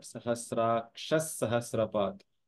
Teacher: Here the pronunciation watchouts are at Sahasraksha Sahasrapat, Visarga followed by a Sa. You will have a Sa at the end of the Sahasraksha. So it is not Sahasrakshaha, but Sahasraksha Sahasrapat.